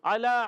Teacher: عین ادا ہوتا ہے حلق کے درمیان والے حصے سے. اعلیٰ لام پر کھڑا زبر، کھڑی حرکات ایک الف کھینچ کر ادا کریں گے.